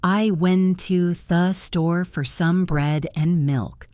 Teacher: The word for often sounds like fur. The word and often sounds like n. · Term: reduced forms